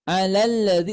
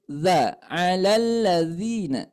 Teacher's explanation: Makhrajnya di ujung lidah menyentuh depan gigi dari atas bawah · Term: zal